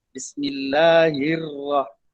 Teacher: Hirrah jadi terlalu nipis huruf ra. Maksudnya ra ni mestilah huruf yang bergegar lidah. Lidah kita akan gegar sikit.